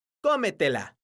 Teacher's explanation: porque su sílaba tónica es la sílaba co entonces tiene un acento ortográfico que se escribe en la vocal